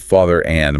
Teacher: father is just father, but father and might have a slight linking R